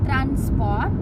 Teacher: itu SP-nya dibacanya biasa aja, nggak perlu dibikin sh